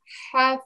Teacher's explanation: So it's the middle of the throat where the ha sound comes from. So remember, try to give the sound accurately from the middle of the throat, yeah?